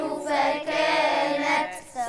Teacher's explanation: الهمس برض يظهر معايا في التاء بتاعه فكانت شايفين النفس يخرج مع الحرف